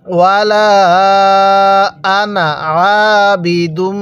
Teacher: ওয়ালা আনা, এরপরে আইন আলিফ জবর বাজের বি, দাল লাগবে এই মিমের সাথে, দুম, দালকে এই মিমের সাথে লাগাবো, তাহলে দাল মিম পেশ দুম, নাকের বাসি দ্বারা গুন্নাহ করব